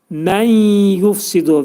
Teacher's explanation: məndəki olan nun hərfi yə hərfinə yetişir və mə'al-ğunnə olur. Yəni burun daxilində sıxılacaq. Mən yufsidu və buna təcvid elmində demək idğam, kiçik idğam deyirlər.